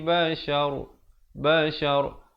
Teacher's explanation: Ra di sini dibacakan tebal kerana walaupun dia hidup berbaris, tetapi bila kita pilih untuk waqaf, dia jadi mati mendatang.